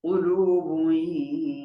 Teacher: با کے اوپر تنوین ہے آگے یا آ گیا تو ادغام مال غنہ ہوگا۔